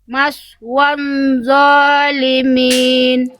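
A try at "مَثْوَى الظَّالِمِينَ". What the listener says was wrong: Muncul lagi nunnya. Nggak ada nun bunda. Buang nunnya lagi, buang. Maswadzolimin. Tadi bunda tuh baca masih gini. Tadi bunda baca itu masih dia masih wawunya kepanjangan.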